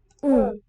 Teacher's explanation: So with nasal resonance.